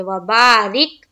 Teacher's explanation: رک میں جزم کا قاعدہ ہو رہا ہے، جزم والے حرف کو پیچھے والے حرف سے ملاتے ہیں، چونکہ را کے نیچے زیر ہے تو باریک کرتے ہوئے ہم ملائیں گے